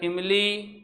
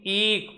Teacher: इमली में ई पे कम जोर पड़ रहा है, ईक, इस पे ई पे क्या पड़ रहा है, ज्यादा जोर पड़ रहा है